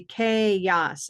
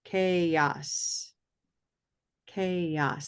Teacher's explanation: Actually, there's no schwa in chaos.